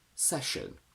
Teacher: Here we get a single sh out of these two S's.